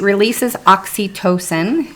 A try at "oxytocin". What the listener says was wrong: Yeah, but you said tosan. Oxytocin.